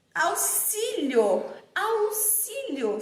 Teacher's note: Auxílio, som de S. Então, auxílio, o X apresenta som de S.